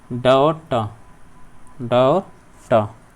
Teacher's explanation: मूर्धन्य व्यंजन होंगे हमारे ड और ट